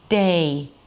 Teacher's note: is not 'deh' 'deh' Not one clean sound, but Day